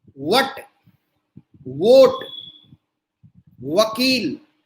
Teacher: लेकिन जो वोट है, वट है, वकील है, इसमें होठ बाहर को निकलते हैं, जैसा तुम लोग पाउट बनाते हो सेल्फी लेते हुए, उस तरह के होठ बाहर को निकलते हैं और थोड़ा सा बीच में खुले रहेंगे।